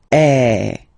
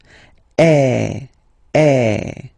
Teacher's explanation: the sound is really open, and normally your mouth should be opened a little bit more than with the accent aigu as well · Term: accent grave